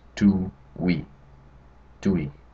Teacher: So each vowel is there, but they run together and it's smooth. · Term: diphthongs